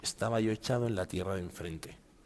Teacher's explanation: como el estaba acaba en vocal y el echado empieza en vocal, se juntan en una sola misma, ¿vale? Entonces se hace como un pequeño corchete y cuentan la misma sílaba.